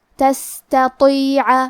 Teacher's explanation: تا کو پتلی آواز میں پڑھنا ہے، اور تو حروف تفخیم میں سے ہے تو ہم حرف تو کو موٹی آواز میں پڑھیں گے